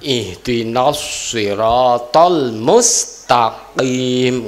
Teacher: Qaf itu sebetulnya tidak nyekluk, tetapi yang keluar terus nyekluk. Kenapa? Karena kalau tidak nyekluk khawatir bercampur dengan makhraj kaf.